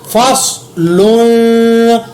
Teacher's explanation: صاد کو موٹا ادا کیا, لام کے اوپر تنوین کی وجہ سے اخفا کیا کیونکہ آگے قاف اخفا کا ہے.